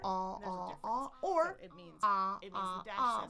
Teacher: my tongue is in the back. You notice my jaw is just wider.